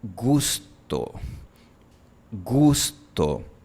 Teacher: Desde la posición para la consonante G, la lengua solo baja 1 milímetro. Nada más. Casi no se mueve. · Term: la U española